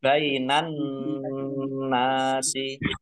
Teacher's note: alif lam samsiah karena tidak dibaca langsung masuk ke huruf berikutnya yaitu nun, ditandai nunnya ada tasdidnya. · Nun tasdid dibaca hunnah atau mendengung, ditahan dua harokat biar tampak dengungannya.